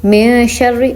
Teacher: نون ساکن اور تنوین کی آواز کو ناک میں چھپا کے پڑھیں گے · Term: اخفا